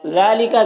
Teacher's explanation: ذال میں کھڑا زبر ہے ایک الف کے برابر کھینچیں گے